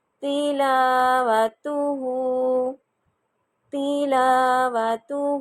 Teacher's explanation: لا کیوں لمبا ہو رہا ہے؟ کیونکہ یہ الف مدہ ہے، خالی الف سے پہلے زبر آ گئی لام پہ